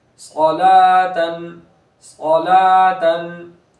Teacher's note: صاد پور کریں گے، حرف مستعلیہ میں سے ہے، لام کو پور نہیں کریں گے، باریک ہے